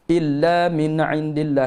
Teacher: Jelaskan bunyi nun mati tanpa tawallud, tanpa terputus getah suara, tanpa dengung. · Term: izhar halqi